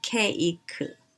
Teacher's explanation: which is one syllable in english becomes a three-syllable word because koreans don't like to end a word with a consonant sound as in cake we have to add a vowel at the end